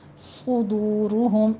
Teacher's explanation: صاد کو پر پڑھنا ہے، سیٹی کی آواز بھی آنی چاہیے اور اوپر ضمہ ہے، ہونٹ گول کیجئے